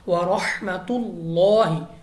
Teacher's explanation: لام اف اللہ سے پہلے حرف پر پیش ہے تو ہم نے لام اف اللہ کو پر پڑھنا ہے